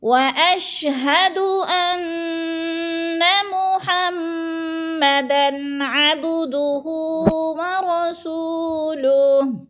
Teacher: انا کی نون مشدد ہے، سختی سے جو کے ساتھ پڑھنا ہے اور لمبا بھی نہیں کرنا۔ واشہد ان محمدن عبدہ ورسولہ، محمدن پہ غنہ نہیں کرنا، ادھر غنہ نہیں ہے۔